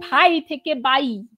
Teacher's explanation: বাংলাদেশের বেশ কিছু প্রান্তিক অঞ্চল উচ্চারণে ভাইকে বাই হিসেবে উচ্চারণ করা হয় তো এখানে আমরা দেখছি যে মহাপ্রাণ ব্যঞ্জন অল্পপ্রাণ ব্যঞ্জনে পরিণত হয়েছে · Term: অল্পপ্রাণী ভবন